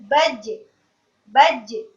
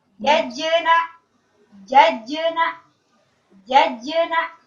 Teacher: tengah lisannya naik supaya bisa menghalangi aliran nafas keluar. Jadi nafasnya tertahan karena naik kan tengah lisannya. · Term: jim sukun